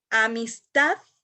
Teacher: tad es la sílaba tónica y estas dos sílabas tienen el carácter de ser sílabas átonas.